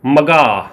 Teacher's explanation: ਮਗਾ ਨੂੰ ਆਪਾਂ ਸਹਿਜੇ ਬੋਲ ਲਿਆ ਕਿਉਂਕਿ ਇਹ ਨੀਵੀਂ ਸੁਰ ਆ